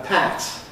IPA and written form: pæt (pat)